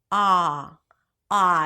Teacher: You want to relax your jaw, relax your lips, open your mouth, and pronounce it as a back open a sound.